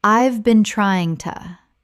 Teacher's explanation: We aren't aiming for slang right now, but look at a phrase like, "I have been trying to." When spoken naturally, the H in have often disappears and the words run together.